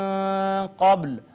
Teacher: با ساکن تھی، اس پہ کلکلہ ہوگا